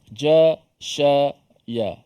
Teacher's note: Huruf shin ni huruf yang berada pada makhraj tengah lidah. Dia sekali dengan jim, shin, ya.